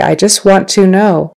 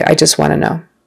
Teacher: Notice in this sentence, the T at the end of want. In regular conversation, we often just kind of drop it and blend that word into the next one, wanna, instead of want to.